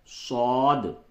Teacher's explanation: دیکھیے صاد جو ہوتا ہے اس کو بھی تھوڑا پڑ کر کے پڑھتے ہیں. صاد، سین کے طرح سیٹی نہ نکلے اس میں، صاد منہ کو بھر کے آپ نکالیں